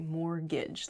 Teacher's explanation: mortgage has a t in it but we don't say the t it sounds like mortgage like there's no t at all a